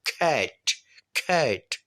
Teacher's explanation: وہ سی کو کھ پڑھتے ہیں اور ٹی کو ٹھ.